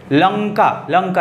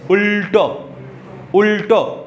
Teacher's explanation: উল্টোর ল আরো একটু পিছনে যেখানে ট উচ্চারণ হচ্ছে ওখান থেকে